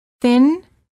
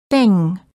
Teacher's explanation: for the N as in thin, the tip of the tongue touches the gum ridge just behind the teeth. And for the ng as in thing, the tip of the tongue is down, not touching anywhere. The back of the tongue is up, touching the soft palate, which is located in the back of your mouth.